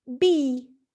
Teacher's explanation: e in b is produced with the lips stretched and the front of the tongue in the highest and most forward position possible then it is high front and unrounded e is high front